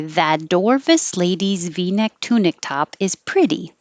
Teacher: that t changes to a d